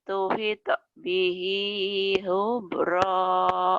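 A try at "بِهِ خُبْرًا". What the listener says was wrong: Ya, khonya kotor ya. Khubra.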